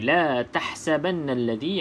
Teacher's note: Jadi pedaskan, senyumkan mulut. Nun yang bersabdu wajibul gunnah, kita wajib dengung 2 harakat.